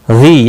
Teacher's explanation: या मद्दा है, एक अलिफ के बराबर खींच कर पढ़ेंगे।